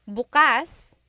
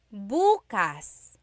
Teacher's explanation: If you say bas the emphasis is on the second syllable that means open. If you say buas emphasis is on the first syllable that means tomorrow.